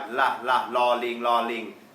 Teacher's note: ส่วนลอลิงก็จะมาจากข้างหลังฟันนะครับ